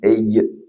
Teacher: Agak ke depan sedikit kaf. Sampai tengah-tengah lidah ditahan suara, ditahan udara keluar huruf jim, j. Dibiarkan udara jalan akan keluar suara shin.